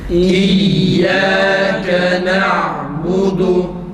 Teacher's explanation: İyyâke boğaz kapanıp açılmasıyla hemze güzel çıkar